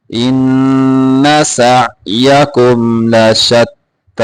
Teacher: ان غنہ پورا کرنا ہے، ان لمبا نہیں کرنا ہے اس کو